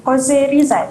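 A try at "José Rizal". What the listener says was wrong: Jose Rizal. Okey, sebutan dia bukan Jos Rizal ya, Jose Rizal sebab Spanish punya pronunciation, maka Jose.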